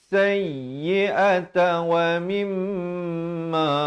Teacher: Sayyi'ata wa mimma dua harakat wajibul ghunnah.